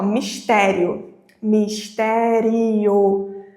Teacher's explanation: Perceba que o som ressoa só pela minha boca. Quando eu pronuncio essa palavra, o ditongo, o som do ditongo, o ar vem do meu pulmão e passa apenas pela minha boca. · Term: ditongo oral